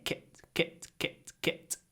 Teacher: And at the end, the kit, the it almost disappears because it's between two unvoiced consonants. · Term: Almost no voice